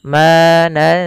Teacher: Bukan lagi nansakh atau hilang nunnya, tapi dia samarkan karena dia bacaan ikhfa.